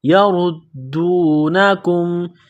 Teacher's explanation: یردونکم، کاف کو باریک کرنا ہے، یردونکم، میم ساکن کے بعد دوسری میم ہے جو مشدد ہے تو میم ساکن سے پہلے والے حرف کاف کو اگلے میم کے ساتھ ملانا ہے، پلس کرنا ہے